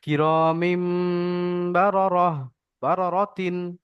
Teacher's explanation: এখানে মিম যখন বলছি তখন আমাদের এক আলিফ পরিমাণ গুন্না করে পড়তে হবে কেননা গুন্না যখনই হবে তখন এক আলিফ তো হতেই হবে।